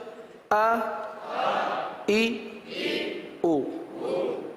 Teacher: حرکات کو بغیر کھینچے بغیر جھٹکا دیے معروف پڑھتے ہیں. تو آپ نے دیکھا کہ حمزہ میں ہم نے نہ ہی کھینچا ہے اور جھٹکے سے بھی بچنے کی کوشش کی ہے.